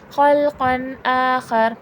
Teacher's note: تنوین کے فوراً بعد حرف حلقی کا حمزہ ہے، تو یہاں پر غنہ نہیں ہوگا، اظہار حلقی کا قاعدہ ہوگا، یعنی کہ بغیر غنہ کے وہ ورڈ پڑھا جائے گا.